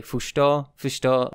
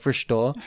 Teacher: sometimes you'll hear, like, a rhotic in there almost, like, just a regular old English rhotic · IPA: /fɚʃto/